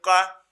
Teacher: देखिए साहब कंठ में स्पर्श हुआ